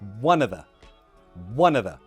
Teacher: with words like of, we just remove the F and that sounds like a schwa sound.